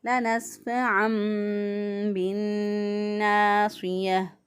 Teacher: لنسفعا بالناصية، نون مشدد گنہ کریں گے، ایک الف کے برابر گنہ کی آواز کو ناک میں ٹھہراتے ہوئے ادا کریں گے · صاد کو پر پڑھیں گے، موٹا پڑھیں گے، کیونکہ صاد جو ہے یہ حروف مستعلیہ میں سے ہے، موٹے حروف میں سے ہے۔